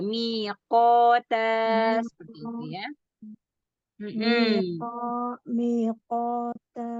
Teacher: tingkatan isti'ala ketika huruf qaf, huruf isti'ala setelahnya alif.